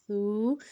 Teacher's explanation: لفظ نرمی سے ادا ہوگا اور اس میں سیٹی نہیں آئے گی